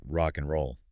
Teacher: a native speaker doesn't say the word and clearly, but reduces it to n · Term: reduction